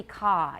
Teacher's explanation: no does not become a diphthong let's put it that way the vowel does not become a diphthong there is no schwa it is simply ca it's a very long a ah sound